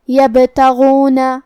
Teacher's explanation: با حروف القلقلہ میں سے ہے تو ہم یہ حرف کو ہلاتے ہوئے یہ کلمہ کو پڑھیں گے